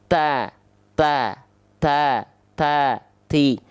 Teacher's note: ujung lidah kita disentuhkan ke pangkal gigi seri atas kita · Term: huruf ta